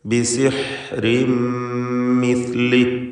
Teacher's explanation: ഫലനഅതിയന്നക ബിസിഹ്രിൻ മിസ്ലി, ബിസിഹ്രിൻ എന്ന തൻവീൻ ശേഷമുള്ള മീമിൽ പൂർണ്ണമായും ലയിപ്പിച്ച് ഇദ്ഗാം ബിഗുന്ന കാമിൽ നൽകി മണിച്ചുകൊണ്ട് ഉച്ചരിക്കുക. ഷദ്ദുള്ള ഒറ്റ മീമ് മാത്രമാണ് പിന്നീട് ഉച്ചരിക്കപ്പെടുക.